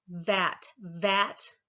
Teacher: If you say vat, you can feel your vocal cords vibrating at the v.